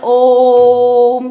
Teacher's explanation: ये ओम को इसलिए ऐसे बोला जाता है कि जब हम ओम को बोलते हैं तो बीच में बहुत ऊंची आवाज करा जाता है ओम, तो उसमें जो है दीर्घ मात्रिक ना होके प्लुत मात्रिक होता है